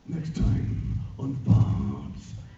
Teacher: anything he says, whether it's a vowel or a consonant, has this rumble at the end of the sound